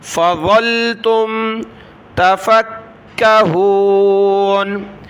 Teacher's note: کاف کو سخت کیا تشدید کی وجہ سے